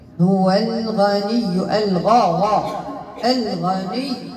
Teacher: نعطي النبر الياء، ياء مشددة عند الوصل والوقف ، كاين عندك النبر، نضغط عليها باش تبان على الحرف اللي